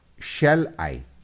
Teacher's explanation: Shall I, here the first vowel and I the second vowel. The first one is unstressed, I is stressed. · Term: iamb